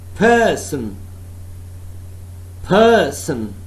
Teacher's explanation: Person, first syllable is stressed, accented one